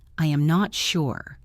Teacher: If I say I am not sure with a falling tone, it means that is my final answer. · If I say, I am not sure, with a flat tone, you know I am about to say more.